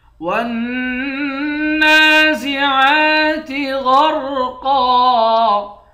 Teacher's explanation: غین، را اور قاف تینوں کو موٹا پڑھیں گے